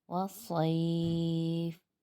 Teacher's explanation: رہا ہے، یہاں پر بھی مد عارض لین وقفی بنا۔ اور یہاں وقف کی صورت میں ہم 1 الف نہیں بلکہ 2 الف کی مقدار کھینچ کر پڑھیں گے